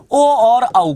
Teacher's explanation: तो कंठ और ओस्ट से बोला जाता है ओ और औ को